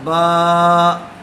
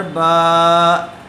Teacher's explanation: کھڑا زبر برابر ہوتا ہے الف مدہ کے، اس لیے اس کو تھوڑا کھینچ کر پڑھیں گے۔